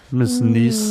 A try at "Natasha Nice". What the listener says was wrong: No, don't call me niece, please. There's no other way to pronounce that. It's not Nice. I've been to Nice.